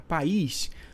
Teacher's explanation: uma palavra oxítona por a sílaba tônica é a última né a sílaba tônica é a última então país é uma palavra oxítona